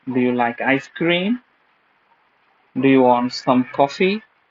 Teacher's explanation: Means at the end, you have to rise up your voice. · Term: rising tone